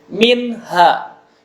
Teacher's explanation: nun mati menghadapi ha ya, itu harus jelas, tidak boleh terpantul, tidak boleh minha, nah, tidak boleh minha, jelas.